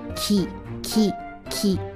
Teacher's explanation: 没有画横线，所以是低音，直接读中文三声调的前半部分